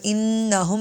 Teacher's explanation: اور انہم میں نون مشدد پر غنہ کریں گے